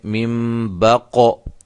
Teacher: یہ قاف قلقلہ ہے، اس کو ہم نے ہلایا ہے